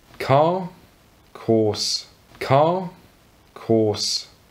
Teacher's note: But there are certain situations where the spelling of words suggests there should be a R, but you don't hear that sound when speaks.